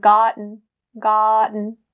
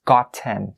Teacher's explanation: we don't make that T sound extremely clear as opposed to maybe other regions